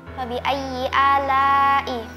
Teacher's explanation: huruf mad bertemu dengan huruf hamzah di dalam satu kata. Dibaca berapa harakat? Dibaca 4-5 harokat. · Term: mad wajib muttasil